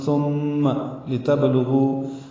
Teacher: با ساکن پہ قلقلہ ہے، لام باریک ہے، غین پر ہے ، غو واو مد ہے اور اس کے بعد حمزہ ہے